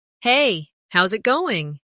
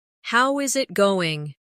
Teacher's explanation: Becomes how's it going? The is disappears and the final G in going often softens. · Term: connected speech